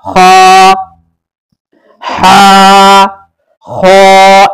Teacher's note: ह के बाद है ह थोड़ा सा मोटा होगा। ख का मखरज है अदनाए हलक।